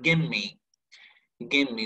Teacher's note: So the V here, it's actually embedded into M. It's actually merged into M. So it's gonna be give me.